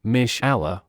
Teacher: there is a slight break between the syllable (mish) and the rest of the word (alah)